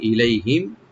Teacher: মিম সাকিন এখানে আমরা এজাহার করব, এখানে এজাহার সফবি